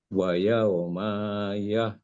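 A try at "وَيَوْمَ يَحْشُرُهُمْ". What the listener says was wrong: Pendek aja, jangan lambat nyambung. Wa yauma yahsyuruhum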